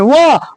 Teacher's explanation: व का उच्चारण स्थान दंत और ओष्ठ दोनों से होगा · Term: दंतोष्ठम